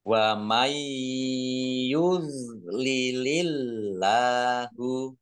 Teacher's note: nun sukun bertemu dengan huruf ya bacaan Idgham bighunah masuk dengan mendengung yaitu mendengung ya ditandai yanya ada tasdidnya nya jangan dipantulkan bukan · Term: idgham bi gunnah